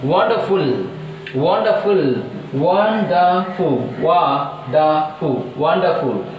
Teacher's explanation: So that stress is on first syllable.